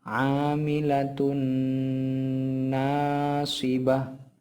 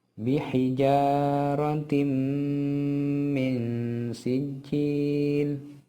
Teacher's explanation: nun sukun atau tanwin tersebut dimasukkan menjadi satu dengan huruf sesudahnya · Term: idgham bigunnah